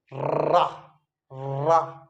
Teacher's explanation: जिह्वा जो होती है वो तालू को टच करेगी, और तालू को टच करके एकदम से उल्टी हुई नोक जिह्वा की तालू को टच करके एकदम से लुढ़क जाए नीचे की ओर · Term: लुंठित व्यंजन